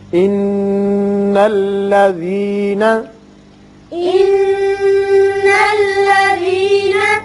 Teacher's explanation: نون مشدد حرف غنہ ہے یہاں غنہ کریں گے